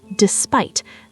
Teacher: The emphasis is on that second syllable.